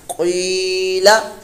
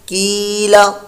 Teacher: قوف پر موٹا ہے، پر موٹا ہی اس کو ادا کریں گے، اس کی جگہ کاف کی ادائیگی نہ بنے ، قیلا، کیلا، قیلا، لام کو لمبا نہیں کرنا، قیلا یہ